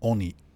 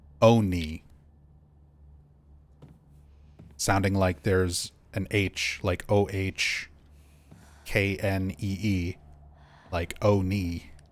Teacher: There's a difference between oni with the shorter O sound, oni, versus oni, sounding like there's an H, like OHKNEE, like oni. There is a little more of a subtle pronunciation difference for oni.